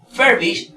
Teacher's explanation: furbish realmente es un verbo y lleva su mayor fuerza de voz en la primera sílaba. Habíamos visto en clases anteriores en la pronunciación de dos sílabas que los verbos se pronuncian, la mayor fuerza de voz siempre estaba en la primera sílaba y no en la segunda sílaba, en este caso aquí.